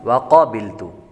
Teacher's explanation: क़ाफ हुरूफ मुस्तालिया में से है इसलिए इसको पुर पढ़ेंगे